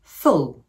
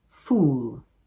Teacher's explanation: The first word contains the short vowel /u/ and the second word contains the longer vowel /u:/.